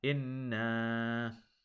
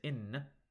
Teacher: noon fatha alif sukun, you have to hold that to 2 counts. If you just say in, you are omitting this alif sukun from this word, and that is an example of a major mistake.